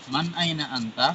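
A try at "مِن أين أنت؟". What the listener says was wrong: Man? Bukan man. min aina anta? Min, ya, siap. Man atau min tadi? Ya, min.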